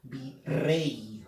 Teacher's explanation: La E es una abierta y esta Y suena como una I latina. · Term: diptongo